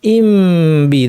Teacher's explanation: দেখেন ঠোঁট লাগানোই আছে, শুধু মিম থেকে আমি বাতে শিফট করলাম, এই জিনিসটা ইখফা।